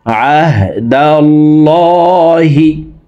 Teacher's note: আল্লাহ শব্দের আগের হরফে জবর অথবা পেশ হইলে এই লামকে ল অর্থাৎ মোটা করিয়া পড়িতে হয়।